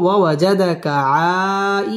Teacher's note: আই মধ্যে মুত্তাসিল 4 আলিফ টান দিয়ে পড়তে হবে।